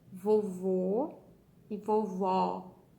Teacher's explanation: a gente termina a palavra com a boca aberta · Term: acento agudo